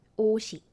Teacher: this 시옷 will move to the zero consonant position and you will pronounce it as 옷이.